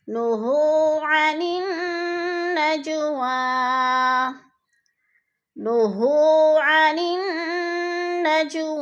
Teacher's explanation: نُهُوا کو ہم نے تھوڑا سا لمبا کرنا ہے، وہ ساکن سے پہلے ہا کے اوپر پیش ہے تو وہ مدہ۔